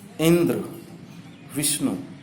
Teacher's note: इंद्र में ई और विष्णु में वी पर विशेष बल लगता है, स्वराघात है। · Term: बलाघात